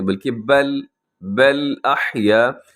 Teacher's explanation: بل میں لام ساکن ہے اور لام کو ہلنے سے بچائیے گا